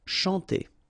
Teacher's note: C and H here, sh, and then A-N, nasal, en.